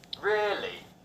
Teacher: A falling tone can indicate disbelief.